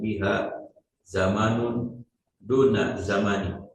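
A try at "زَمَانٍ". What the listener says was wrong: Tanwin, zamanin.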